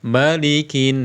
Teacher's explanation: dipanjangkan giliran anasnya dipendek kan malikinas Wah itu dua kesalahan malikinas harusnya maanya ini pendek annasnya yang panjang · bukan Malik dengan mim yang panjang tapi mim yang pendek Malik Jangan dibaca malikinnas jangan tapi maanya dipendekkan malikinas ya kita